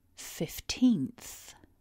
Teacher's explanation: repeat after me with a bigger stress on syllable 2